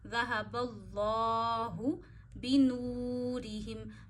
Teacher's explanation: یہاں پہ اللہ سے پیچھے زبر ہے نا با پہ، تو اللہ موٹا پڑھیں گے